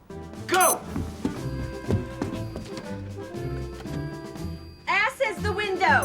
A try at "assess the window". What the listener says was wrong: it's assess the window not ashes the window you put the wrong emphasis on the wrong syllable